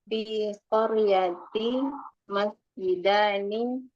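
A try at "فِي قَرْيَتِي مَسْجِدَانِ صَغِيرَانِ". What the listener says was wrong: Koryati. Artinya dipanjangin sedikit. Koryati.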